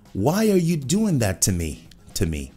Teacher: O to várias vezes se torna ta.